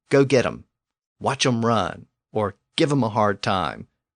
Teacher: sometimes that old English object form hem was being pronounced without its initial H sound so it became M and this usage has actually survived into